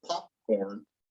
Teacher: popcorn, where we don't really finish that P, that's called an unreleased sound